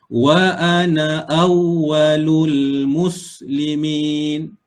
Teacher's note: Ketika wasal, maka alif ini tak ada fungsi. Jadi na ni dibaca pendek.